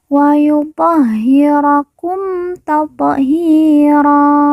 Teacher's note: ha yang bertasdid kita baca ditekan dan ditahan dua harakat